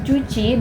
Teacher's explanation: gabungan antara letupan dan gesekan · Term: affiriat